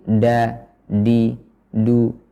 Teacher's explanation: huruf dal banyak diucapkan di langit-langit atas. Jadi da, di, du, maka ini kurang tepat.